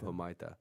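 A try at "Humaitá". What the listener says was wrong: You don't pronounce the H, idiot.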